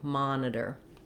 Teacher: the word has first syllable stress. So my mon syllable is long and my iter syllables are going to be short and reduced. The mon letter O says vowel ah.